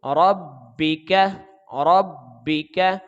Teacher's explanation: کاف کو باریک پڑھیں گے لیکن اس کو جلدی بھی ادا کریں گے